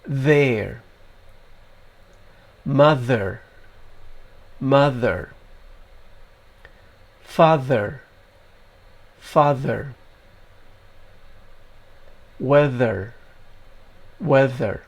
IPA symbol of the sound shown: ð